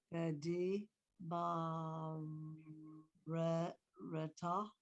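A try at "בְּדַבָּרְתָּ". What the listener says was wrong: No. It's one, two, it's 4 syllables. So the v, d, and put the bait and the resh next to each other together as one syllable. Bar. V, d, bar, ta.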